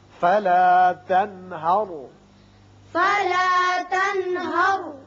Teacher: یہاں نون ساکن کے بعد ہا ہے جو کہ حروف حلقی میں سے ہے، لہذا یہاں اظہار حلقی ہوگا